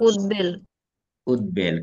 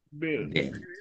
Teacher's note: উদ্বেল, কারণ এখানে এই বটা ফলার আগে সন্ধিতে বিচ্ছেদ ছিল, ফলে সন্ধির মাধ্যমে যেটা ফলায় পরিণত হয় ওই ব ও উচ্চারণে অবিকৃত থাকে